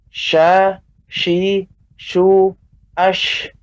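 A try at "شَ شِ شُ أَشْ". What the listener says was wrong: Untuk pengucapan shin tidak juga berlebihan dalam arti memonyongkan bibir seperti sya, shi, shu, ya. Tidak tebal, tapi pengucapannya datar seperti biasa, alami. Sya, shi, shu, ash.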